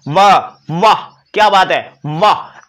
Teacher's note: नीचे वाला होंठ ऊपर वाले दांत स्पर्श करते हैं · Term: दंतोष्ठ